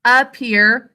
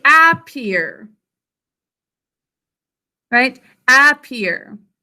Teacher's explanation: There's an unstressed syllable at the beginning, appear. How should we think to spell this?